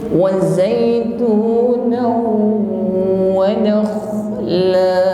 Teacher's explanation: huruf kha sukun ya, suaranya tebal, ada sedikit ngorok tapi tetap lembut